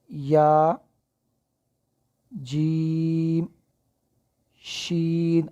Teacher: ہماری زبان کا درمیانی حصہ جو ہے وہ اٹھ کر اوپر نرم تالو کے ساتھ وہ جا کے لگ رہا ہے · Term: حروف شجریہ